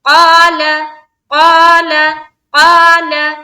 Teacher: قا میں الف مدہ لام کو جلد